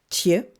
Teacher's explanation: avec un son T suivi d'un son ch mouillé